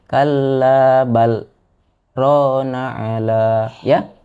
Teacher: Di sana berhenti kalla bal tapi dia tidak mengambil napas ya, berhenti sejenak tapi tidak bernapas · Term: sakta